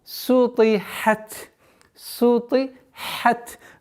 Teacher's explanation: Распространенная ошибка здесь — это твердое произношение сина, так как та влияет на син.